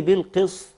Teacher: انت كده ابدلت السين صادا ورفعت القاف الى مرتبه عاليه وهي في ادنى المراتب